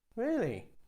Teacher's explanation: You can use a falling tone to sound sarcastic.